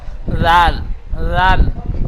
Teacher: জাল, জালের মাখরাজ পড়েছিলেন জিহ্বার আগার সামনে উপরে দাঁতের আগার সাথে থেকে জাল উচ্চারিত হয়। তো জিহ্বার আগাটি সামনে উপরে দুই দাঁতের আগার সাথে হালকাভাবে ঠেকিয়ে জাল উচ্চারণ করবেন।